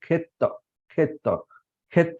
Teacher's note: और दूसरा उदाहरण अगर ले तो खेत, खेत खेत में भी तो को तो जोड़ा गया है, और खे में जो ख प्लस ए जो है खे, तो उसका ए का उच्चारण हम जो है वो शॉर्ट में करते हैं, मतलब ह्रस्व में करते हैं